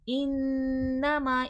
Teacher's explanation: اور یہاں پر بھی دیکھیں، تا کی گول تا کا وقت ہاں میں ریپلیس ہو جائے گا۔ انما، ان میں نون مشدد ہے، غنہ ہوگا